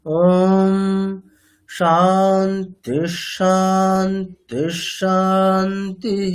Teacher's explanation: শান্তি প্রথম দুটি নিচে আছে। পরেরটা উপরে আছে।